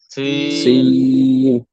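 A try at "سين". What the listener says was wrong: হ্যাঁ হ্যাঁ মুখটা খুলতে হবে। সিন। হ্যাঁ একটু একটু শক্ত, একটু শক্ত। সিন। দেখেন সিটি আওয়াজ করে পড়তে হবে 3টি হরফ।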